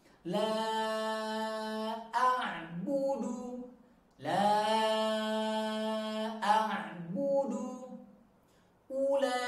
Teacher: Baris pertama panjang, ya, kita ambil 4 harokat. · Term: bacaan panjang 4 harokat